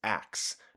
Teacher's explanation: Many dialects of Modern English have unique metathesis in words such as ask, which some people pronounce as aks. The s and k sound switch places.